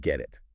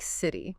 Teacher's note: >> When a T sound comes between two vowel sounds, it often softens. It sounds less like a sharp t and more like a soft d or even sometimes a quick r sound. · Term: flap T